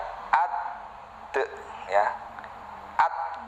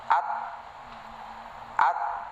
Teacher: pucuk lidah nempel di gusi atas